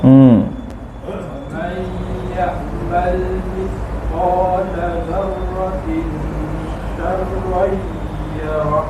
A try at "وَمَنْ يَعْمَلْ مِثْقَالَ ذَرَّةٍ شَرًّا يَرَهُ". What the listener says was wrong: Syarran yarah. Bukan syai, syarr.